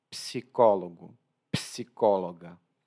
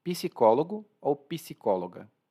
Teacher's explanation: eu faço um P muito suave